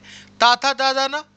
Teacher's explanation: दांत से बोले जाते हैं